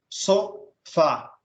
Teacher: o fá no final aí, que é a última, é acentuado. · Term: oxítonas